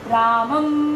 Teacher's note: देखिए, मेरा मुख बंद हुआ और नाक से सारी वायु बाहर गई है। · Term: अनुस्वार